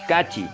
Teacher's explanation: capital casera consonante es velar es para este caso de pronunciación el articulador es el dorso de la lengua y el punto de articulación en la parte de atrás del paladar